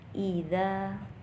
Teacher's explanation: Jadi yang pertama di situ ada mad tabi'i pada bacaan idza, sebab di situ ada fathah yang bertemu dengan alif, maka dibacanya panjang